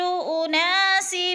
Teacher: انا پہ الف مدہ ہو رہا ہے، ایک الف کے برابر کھینچ کر پڑھیں گے